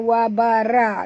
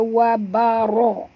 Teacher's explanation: Wa barazu, ra tebal, ya. Jangan baca wa bara tapi baca wa baro.